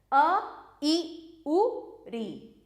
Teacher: इन स्वरों के उच्चारण में कम समय लगता है इसलिए इन्हें ह्रस्व स्वर कहते हैं।